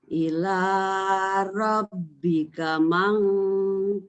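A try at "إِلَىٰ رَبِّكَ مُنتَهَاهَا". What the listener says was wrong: mung bukan mang. Mung.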